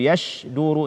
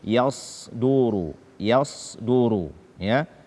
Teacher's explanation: Karena sin dengan shin dia tipis, sementara sad dia adalah huruf tebal karena dia salah satu dari huruf isti'la.